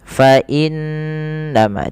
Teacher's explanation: kita tahan dahulu suara bunyi n-nya sepanjang 2 harokat. Fa innama, tidak hanya sekedar fa innama saja, tapi wajib ditahan dengan gunnah, dengan sembari memasukkannya ke rongga hidung kita.